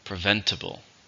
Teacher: How many syllables are in preventable? There are 4, stresses in the second